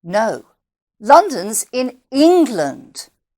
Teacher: the stressed word should be england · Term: sentence stress